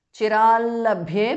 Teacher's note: Chirat changes to l because of sandhi. Labhye bha mahapranah.